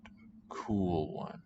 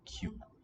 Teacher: Anyway, in cute, for example, C-U-T-E, we have palatalizing segment there between the consonant and the vowel u